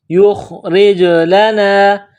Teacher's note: کے اوپر جزم کا نشان ہے، خا کو موٹا کرنا ہے، جس طرح انسان گلے سے بلغم نکالتا ہے اسی طرح خا کو نکالنا ہے ، را کے نیچے زیر ہے تو را کو باریک کرنا